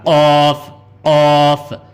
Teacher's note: کاف جیسا انگلش میں کے پڑھتے ہیں ایسا کاف، لیکن اس کو حلق سے نکالنا